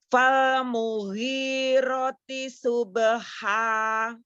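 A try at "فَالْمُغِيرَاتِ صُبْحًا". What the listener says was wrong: Rohnya panjang. Roh.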